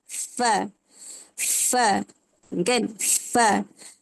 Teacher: Yang kelima huruf fa. Fa ni makhraj hurufnya dekat gigi seri atas dan bibir bawah. Gigi atas ni menyentuh bibir bawah.